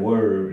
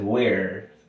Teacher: Este es were, como que se cierra la pronunciación al final, were, y el otro es where, como más amplia.